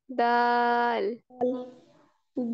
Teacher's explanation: ठीक है, इनके मखरिज बताएं। अ, दाल का जो मखरिज है वो जुबान की नोक को सामने वाले जो ऊपर के दो दांतों की जड़ से लगाते हैं, और इसको जो है वो बारीक आवाज में हम पढ़ते हैं।